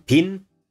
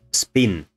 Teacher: aspirate only when they are stressed and word initially so here in pin this is aspirated but spin is not aspirated